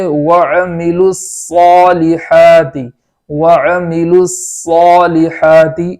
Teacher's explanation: جس طریقے سے ہم سین کو پڑھتے ہیں اسی جگہ سے صاد کو بھی پڑھیں گے، صرف موٹی آواز پیدا کر دیں گے تو وہاں سین اور صاد کا فرق پیدا ہو جائے گا.